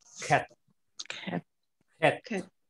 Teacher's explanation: that pronunciation should come out of throat. So, as if you are clearing the throat. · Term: strong guttural letter